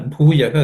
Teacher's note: Bhu is aspirated. Okay. With extra air and emphasis.